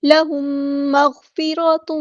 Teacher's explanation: کے بعد میم آ رہا ہے تو یہاں پر لہم مغفرۃ، میم ساکن کے بعد میم ہے تو یہاں پر ادغام شفوی ہو رہا ہے ، ادغام کامل، لہم مغفرۃ، ایک الف کے برابر ہمیں یہاں